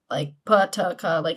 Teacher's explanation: stops are the same, voiceless, pa, ta, ka